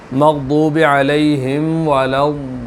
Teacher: لام آ گیا شد والا، اس پہ بھی تھوڑی دیر ٹھہریں گے